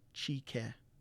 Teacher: usually other dialects would say daji ke, but Nipissing uses a CH sound in place of DAZH